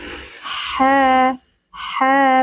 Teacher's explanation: Dibaca 2 harokat karena ada alif sebelumnya fathah, mad tabi'i. Ha, tenggorokan bagian tengah, mengalir nafasnya dan mengalir suaranya.